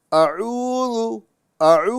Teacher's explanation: यानी ऐन के साथ में वाव मद्दा है। तो वाव मद्दा एक अलिफ की मिकदार में दराज करके पढ़ेंगे